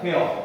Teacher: 뭔가 중간에 여와 어 사이에 애매모호한 소리가 나요. 그러면 이렇게 발음하는 것도 올바르게 발음하는 거거든. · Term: 반모음 첨가